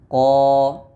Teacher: Karena pada proses pengucapan huruf Qaf, pangkal lidah kita terangkat, maka akan mengakibatkan suara yang menebal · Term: isti'la